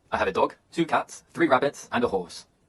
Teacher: intonation often Rises with lists of information that falls at the end of the sentence